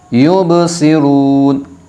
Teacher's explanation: یہاں پر آیت ہوگی اس لیے نون کو ساکن کر دیا جائے گا